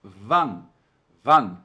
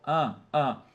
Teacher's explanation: Seria como se a gente dissesse assim, olha, van, tá? Então, a gente joga o a pro nariz, ó. Ã, ã.